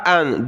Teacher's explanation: دو حمزہ ہیں، پہلا حمزہ ہے حمزہ زبر آ، دوسرے حمزہ کو نون کے ساتھ ملائیں گے، اور یہ نون ساکن کلرفل ہے، یعنی ناک میں آواز پیدا کرنی ہے. حمزہ نون زبر ان.